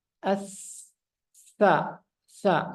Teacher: bisa dirasakan napas yang keluar itu mengalir dengan deras